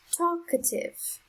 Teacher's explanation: the syllable with the strongest sound is the first one